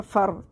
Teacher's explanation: فا را زبر فر. را کو موٹا پڑھیں گے کیونکہ را ساکن سے پہلے زبر ہے